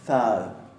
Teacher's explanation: Fíjense que ahí tenemos dos interdentales, una sonora y otra sorda.